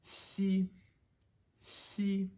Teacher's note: So XI is C, C, and with XI, with X in particular, you'll know you're doing it the right way when you are breathing over your teeth so much with that whistling sound that your middle teeth on the bottom will actually feel a little cold because you're putting that much air through them, or over them, I should say.